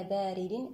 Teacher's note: لا بارد، أيضا باء هنا الألف التي بعد الباء ما الطبيعي بمقدار حركتان. الراء هنا مكسورة مرققة